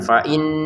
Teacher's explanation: ada nun bertasyid kita dengungkan